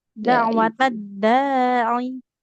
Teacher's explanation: Yang panjang huruf dalnya bukan ain ya